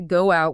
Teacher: native speakers add ghost sounds, like turning go out into go out with a W in the middle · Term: intrusion